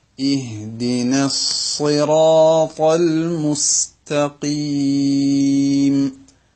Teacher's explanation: ഇഹ്ദിനസ് എന്ന് പറയുമ്പോൾ സ്വാദിനെ മാത്രമേ അവിടെ വണ്ണിക്കേണ്ടതുള്ളൂ. അതിന് മുമ്പത്തെ നൂനിന് ഇല്ല. സിറാത്തയിലെ റാവും താവും വണ്ണിക്കണം, തഫ്ഖീമാക്കണം.